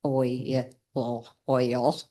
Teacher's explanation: Um they also learn that vowels can work together to create a diphthong where your tongue slides from one vowel position to the next and we can hear two sounds in that situation